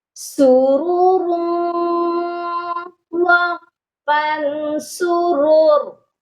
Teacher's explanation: دونوں را موٹی پڑی جائیں گی۔